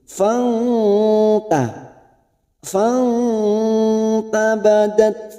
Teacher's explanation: [Musik] qiya fahamalat tak sukun mempunyai sifat Hames [Musik] hamalatuabadat fahamalatu ada nun sukun bertemu ta ikhfa Hakiki kita samarkan bunyi nun sukun